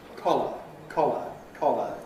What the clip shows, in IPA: ˈkɒlə